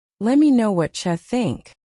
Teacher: Let me becomes lemmy.